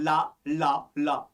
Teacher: ला पढ़ने पे जीभ तो तालु में टकरा गई, वायु पार्श्विक कर गई। जब पार्श्विक कर गई तो ये बच्चे क्या बन गया, याद रखो दोस्तों, ये पार्श्विक बन गया।